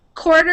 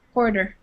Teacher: It's written with a T, and you'll hear it more like a D sound.